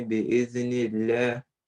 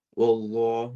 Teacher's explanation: The first lam bi'ithnillah, it's light because it's preceded by kasra, and the second one is heavy because it's preceded by fatha.